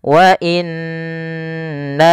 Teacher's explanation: Jaiz itu boleh mad panjang, maka di sini na-nya dipanjangkan sepanjang 4 harokat atau 5 harokat. Wa inna, setelah pertama menahan nunnya, kemudian na-nya dipanjangkan lagi. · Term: mad jaiz munfasil